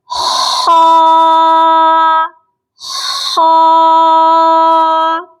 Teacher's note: آپ اس پکچر میں بھی دیکھ سکتے ہیں کہ یہ حلقے اوپر والے حصے سے ادا ہو رہا ہے